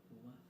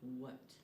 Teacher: The sound for w is made with the back of the mouth. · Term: glide